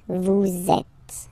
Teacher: vous is ending with S, and then you tend to make a little link between them. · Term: liaison